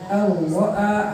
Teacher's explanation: Ar-ra'a hanya satu kali getaran